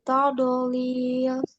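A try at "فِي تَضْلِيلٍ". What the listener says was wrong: Tidak mantul, jangan tadlil. Fi tadlil. Tadlil.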